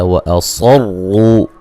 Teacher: صاد کو موٹا ادا کریں گے اور را کو بھی موٹا ادا کریں گے. را کے اوپر پیش ہے.